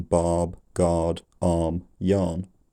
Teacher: R before a consonant is greatly softened almost silent and makes the proceeding vowel slightly longer as in Barb guard